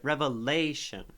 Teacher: So lay is pretty stressed.